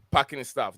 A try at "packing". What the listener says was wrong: Yeah, you said parking. It threw me completely. No, pack. Like pack their stuff.